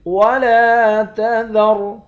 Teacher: لام کے بعد الف ہے، ایک الف کے مقدار کھینچیں گے